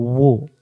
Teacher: ওয়াও পেশ দুই ঠোঁটের মাঝখানে নিয়ে যাব ও